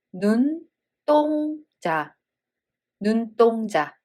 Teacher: And the second letter starts with d sound. So this d sound becomes tensed.